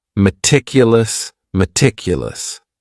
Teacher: this word has four syllables and the stress is on that second syllable.